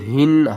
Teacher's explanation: ہا کو ہم نے حلق کے سب سے نیچے والے حصے سے ادا کرنا ہے